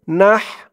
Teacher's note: নাহার উচ্চারণটা গলার ভেতর থেকে হয়ে বের হবে